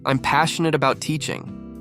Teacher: Stress passionate to show enthusiasm. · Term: emphasize key words